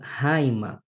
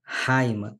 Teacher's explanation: quando o espírito é áspero, que vai sofrer uma aspiração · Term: espírito áspero